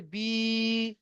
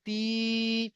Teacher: ইয়া মাদ্দাকে এক আলিফ পরিমাণ টান দিয়ে পড়তে হয়